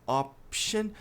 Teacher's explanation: A pronúncia do O é o percebe que eu coloquei um a depois do O porque ele não é um o só option. Tem um leve a depois do som de o